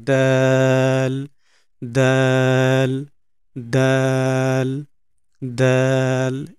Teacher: দাল আমাদের জিহ্বার অগ্রভাগ উপরের দাঁতের গোড়ার সঙ্গে লাগবে